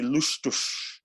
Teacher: The Z at the end is a sh sound, like in German.